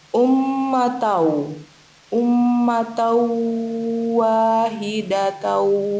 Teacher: Terjadi karena ada huruf tanwin bertemu dengan huruf waw. Maka bacanya dilebur dengan dengung. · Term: idgham bi gunnah